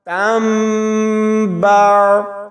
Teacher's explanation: ہم اس کو تن نہیں پڑھیں گے بلکہ چھوٹی میم کے ساتھ ملاتے ہوئے آگے با کے ساتھ ملائیں گے۔ تا میم دو زبر تم، با عین زبر با، تم با۔ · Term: اقلاب